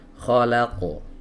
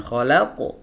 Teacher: masuk cepat saja tidak perlu ada hentakan di sana